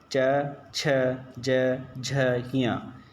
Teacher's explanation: च वर्ग च छ ज झ ञ ये सभी तालु से बोले जाते हैं